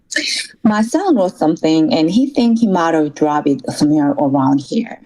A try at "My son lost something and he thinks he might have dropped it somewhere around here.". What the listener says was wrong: 네, 전반적으로는 좋았는데 dropped it. 쌍디귿 발음이 들리면 좋아요.